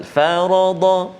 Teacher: Ra dengan dad saja yang tebal.